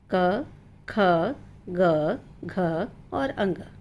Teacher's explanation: यानी जब भी हम इन सब को उच्चारित करते हैं, हमारा कंठ प्रयोग करते हैं। ये सारी आवाज़ें हमारे कंठ से निकलती है